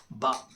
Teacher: यह दोनों होठ के गीले हिस्से को आपस में मिलाने से अदा होता है। दोनों होठ उसका जो गीला हमेशा भीगा हुआ हिस्सा रहता है।